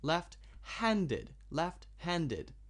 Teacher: If it is a compound adjective, then you emphasize the second part, left-handed, left-handed.